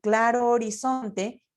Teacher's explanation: la H que no tiene un sonido no interfiere en la sinalefa. Por ejemplo, yo puedo decir claro horizonte y voy a poder juntar claro O, porque la H no va a romper.